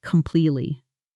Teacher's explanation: completely often loses a little of its middle syllable coming out more like completely.